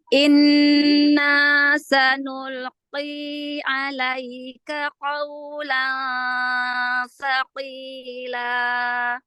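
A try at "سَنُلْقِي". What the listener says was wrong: Ya, sanulqi, jangan terlalu dibanting qafnya. Sanulqi. Karena dia qaf kasrah itu tingkat ketebalannya paling akhir di nomor 5 ya. Jadi enggak qoi, enggak qi, gitu aja. Sanulqi. Tipiskan lagi. Sanulqi. Karena dia tafhimnya tingkatan terakhir. Jadi paling tipis dia huruf qaf yang kasroh.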